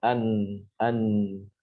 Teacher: nun sukun, itu makhrajnya ada di ujung lidah, ditempelkan dengan langit-langit mulut di atas gusi, ya, di bawah makhraj lam.